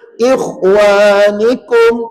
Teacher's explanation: Tebal atau meninggi pada kha. Maka tuan-puan jangan baca ikhwa. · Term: isti'la